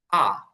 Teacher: এটাকে আর বলা যায়, আর ব্রিটিশরা এই আর এর ক্ষেত্রে রটা উচ্চারণ করে না, ওরা বলে আ। আ, আর না বলে ওরা বলে।